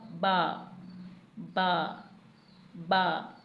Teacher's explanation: जब होंठों के खुश्क हिस्से आपस में मिलेंगे, यानी तर हिस्से नहीं, खुश्क हिस्से आपस में मिलेंगे तो बा अदा होगा